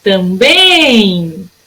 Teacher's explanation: Também. O meu bem foi a sílaba que durou mais tempo. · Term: oxítona